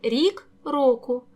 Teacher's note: чергуються голосні і о